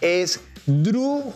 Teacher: Y las esdrújulas son aquellas que siempre se les marca la tilde y el acento lo llevan en la antepenúltima sílaba